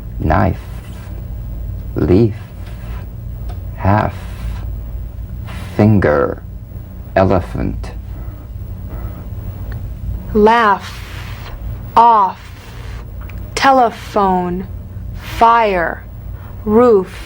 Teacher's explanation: The F is a cognate to the V, the unvoiced fricative labiodental. Upper teeth to lower lip, just like the V.